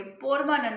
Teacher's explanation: परमानंद लिखेंगे और क्या बोलेंगे, पोरमानंद बोलते हैं, क्योंकि यहाँ पर ओ ज्यादा बोलते हैं